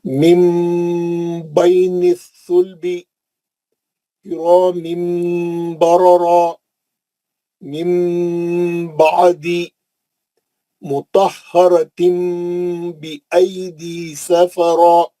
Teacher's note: اور میں میم کا غنہ کر کے پڑھ رہا ہوں